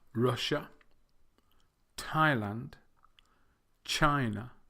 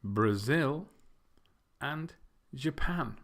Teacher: the first three Russia Thailand and China have this dress on the first syllable